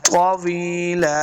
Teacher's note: یا مد ہے اس کو دو حرکات لمبا کرنا ہے ، طویلا، وقف کریں گے تو ایک زبر کو ساکن کر